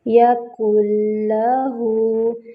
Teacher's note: ہا پہ جو ہے واو صغیرہ بن رہی ہے، 2 حرکات برابر اس کو لمبا کریں گے، اور یا کا جو مخرج ہے وہ ہے وسط اللسان بالمقابل حنک الاعلیٰ، یعنی زبان کا درمیانی حصہ جب اوپر تالو سے چپک جاتا ہے نا تو پھر یا ادا ہوتی ہے۔